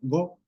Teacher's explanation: vemos como se hace un alargamiento en este caso pues una reduplicación de la vocal para acomodar todo el movimiento tonal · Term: alargamiento vocálico